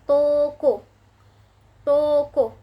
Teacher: O dengan madya atas belakang dengan kondisi mulut semi tertutup menghasilkan kata toko, toko.